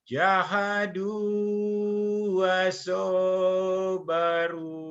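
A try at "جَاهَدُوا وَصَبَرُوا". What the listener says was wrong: Yang panjangnya jadu sama wasobaru. Coba lagi. Wasobaru. Jahadu wasobaru.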